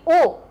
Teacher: कंठ और ओष्ठ की ध्वनि से ओ औ निकलते हैं। ये हमने बताया, क्योंकि ओ आप बोलिए तो कंठ से ध्वनि निकलेगी और ओ जो हमारे ओष्ठ हैं यानी होंठ हैं वो भी उसको बोलने में सहायता करते हैं। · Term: कंठोष्ठज